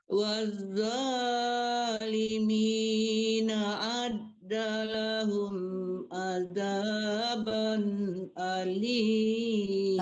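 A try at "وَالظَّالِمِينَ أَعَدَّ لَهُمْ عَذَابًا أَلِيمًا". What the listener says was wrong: A-nya ketinggalan. Coba lagi.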